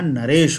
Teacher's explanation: उसी प्रकार नर और ईश, नर का अ और ईश का ई मिलकर के ए बना दिए